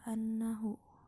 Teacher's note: An-nahu ini hukumnya gunnah karena nun bertanda tasydid dan cara membacanya dengan cara dengung serta ditahan 3 harokat. Selain gunnah, an-nahu hukumnya juga ada mad silah qasirah sebab huruf ha bertemu dengan huruf selain hamzah.